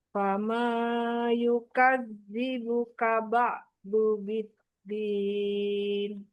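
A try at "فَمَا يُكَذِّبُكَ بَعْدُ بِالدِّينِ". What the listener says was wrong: Hanya jangan panjang-panjang, 2 harokat. Fama yukadzi.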